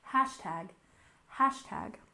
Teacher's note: And next we have hashtag with stress on the first syllable, hashtag, hashtag.